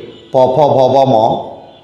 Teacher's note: আরেকটু সামনে ওষ্ঠ বলে প বর্গের ধ্বনিগুলো সব ওষ্ঠ ধ্বনি